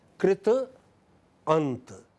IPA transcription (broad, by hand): krit+ənt